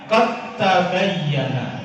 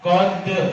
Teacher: Dal masuk ke ta, dalnya dianggap sudah tidak ada. Tidak boleh dipantulkan.